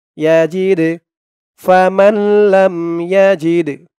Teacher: ধরবে লাম মিম জবর লাম ফামাল্লাম ইয়াজিদ জিম দিয়ে দালকে ধরবে এই দালটা কলকলার হরফ ধাক্কা দিয়ে পড়তে হবে